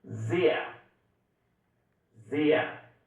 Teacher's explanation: Zer. Você já percebe que o S no começo ele tem som de Z.